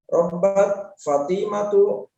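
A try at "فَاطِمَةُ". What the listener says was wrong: Fatimatu. Fa-nya panjang.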